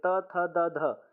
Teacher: दांत से त थ द ध ये चारों क्या है दांत से बोले जाने वाले हैं